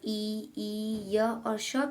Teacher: ई ई य और श का उच्चारण भी तालू के द्वारा ही होता है तालू से उच्चारण किए जाने वाले वर्णों को तालव्य वर्ण कहा